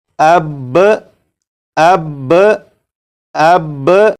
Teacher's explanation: با کو پڑھنے کے بعد آواز کو ختم نہیں کریں گے بلکہ آواز کو تھوڑی دیر کے لیے روکیں گے۔ آواز کو تھوڑی دیر کے لیے روکنے کے بعد جب آپ با کو پڑھیں گے تو یہ بالکل صحیح پڑھا جائے گا، جیسے اب اب اب۔ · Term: تشدید